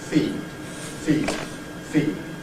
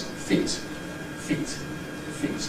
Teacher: The first one is feed, the second one is feet. We have a reduction in duration before the Fortis consonant, before the T sound, feet. · drawing your attention to the likely devoicing of the D in feed, and the possible glottal reinforcement or replacement of the T in feet, together with the reduced duration, clipped duration of the vowel in feet.